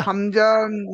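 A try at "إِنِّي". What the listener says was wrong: হামজা বলে টানবেন না, হামজা, নুন জের ইন। সেই হামজা, হাম খেয়াল করে পড়েন ভাই, যখন পড়ছেন তখন খেয়াল করে, যে হামজা মোড়ে টানবো না, হামজাটা তাড়াতাড়ি পড়বো। হামজা, বলেন আমার সাথে, হামজা, নুন জের ইন, নুন জের নি। হ্যাঁ, নুন বলে, নুন বলে চেপে ধরছেন কেন ভাই?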